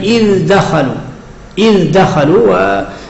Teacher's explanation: تلاحظون الدال هنا من حروف جت. إذ دخلوا أظهر من غير قلقلة ولا إضغام